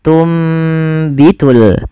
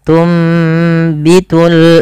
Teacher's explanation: apa yang dibalikkan pada dasarnya tunbitu karena ada huruf ba maka suara nunnya dirubah dan diganti dibalikkan menjadi suara huruf mim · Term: iqlab